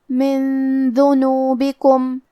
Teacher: کلمت ذنوبکم دال حروف الاخفاء میں سے ہے اور اخفاء کا معنی ہے چھپا دینا. تو ہم یہ نون ساکن کو چھپاتے ہوئے لیکن غنہ کے ساتھ یہ حکم کو ادا کریں گے